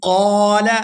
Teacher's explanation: یہاں قاف کو پورا ادا کرتے ہوئے کھینچ کر ادا کریں گے کیونکہ اس کے ساتھ الف مدہ ہے